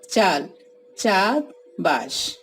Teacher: বাংলায় এক অক্ষর শব্দে আ দীর্ঘ হয়।